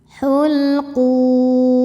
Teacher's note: Lam sukun disebut dengan lam mutlak. Dibacanya jelas. Hulquum. Saat berhenti hukumnya adalah mad arid lukun.